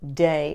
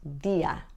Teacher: the D is a dental sound in Spanish your tongue is behind your teeth